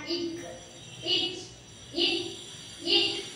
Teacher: வல்லின மெய்யெழுத்துக்கள் 6 மார்பை இடமாக கொண்டு பிறக்கின்றன.